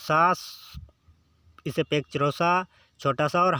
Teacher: इनके उच्चारण में सांस तेजी से बाहर निकलती है और गर्मी यानी ऊष्मा पैदा होती है। यानी सांस के साथ आते हैं, तो इसीलिए इन्हें उष्म व्यंजन कहते हैं।